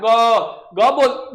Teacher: ग बोलते समय जब हवा निकल रहा है तो क्या हो रहा है, कंपन हो रहा है। · सघोष व्यंजन को जब हम लोग बोलते हैं तो बोलते समय जो हवा निकलता है वह कंपन के साथ निकलता है